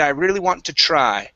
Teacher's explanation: okay my voice goes down try